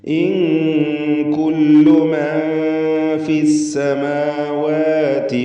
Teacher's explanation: ഇൻ കുല്ലു സാക്കിനത്ത നൂനും ശേഷം കാഫും ഇഖ്ഫാ ഹഖീഖി മറച്ചു മണിക്കണം.